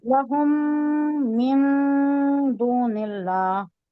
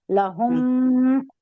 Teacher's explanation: لہم میں یہ ادغام ہو رہا ہے، یہ میم کو میم سے ملانا ہے. اوکے، میم ساکن ہے نا، لہم میں میم ساکن ہے نا، ہاں ہاں تو بعد کا من میں میم مشدہ ہے نا، اسے ملانا ہے.